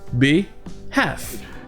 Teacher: dans le mot half et dans ce mot behalf, le L est muet